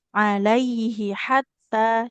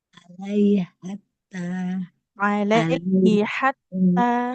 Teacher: Yang satu alaihi di pangkal tenggorokan. Yang satu lagi hatta di tengah tenggorokan.